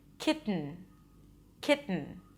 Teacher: When a T appears before an unstressed vowel, hence the schwa, and then an N, the T is not released, but it's released through the nose